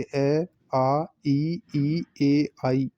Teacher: अवृत्ताकार, इन स्वरों के उच्चारण में होठ गोल नहीं होते